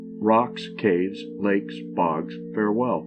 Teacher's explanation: It is a foot with both syllables accented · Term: spondy